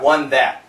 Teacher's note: the N is canceling the TH, one that.